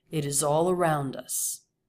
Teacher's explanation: The energy goes up to all, and then it falls away from all.